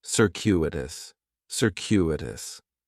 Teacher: In the first syllable, that C is going to have more of an S sound, circuitous. The stress is going to be on that second syllable, and that CU is kind of like you're saying the letter Q, circuitous, circuitous.